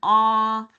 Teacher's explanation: we're down there on that low and open o